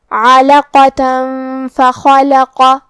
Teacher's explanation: کلمت فخلق میں یہ پورے کلمہ پہ زبر ہے، لہذا ہم یہ چاروں زبر کو ظاہر کریں گے اور اسے برابر سا ادا کریں گے. حرف الخاء کو ہم حلق کے اوپر والے حصے سے پڑھیں گے · کلمت علاقتن میں عین کی ادائیگی حلق کے درمیان والے حصے سے ہے. عین پہ اور لام پہ اور قاف پہ زبر ہے، لہذا ہمیں یہ تینوں زبر کو برابر سا ادا کرنا ہے. · حرف القاف کی ادائیگی زبان کے جڑ اور تالو کے نرم حصے سے ہے. قاف حروف التفخیم میں سے بھی ہے تو ہم یہ حرف کو بھاری آواز میں پڑھیں گے. آخری میں تا پہ تنوین زبر ہے، پھر حرف الفا ہے.